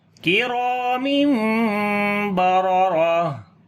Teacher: کاف کو باریک پڑھیں گے، را کو موٹا پڑھیں گے اور لمبا بھی کریں گے، الف مدہ ہے